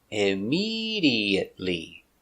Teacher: 5 syllables. Immediately. Stress on the second syllable.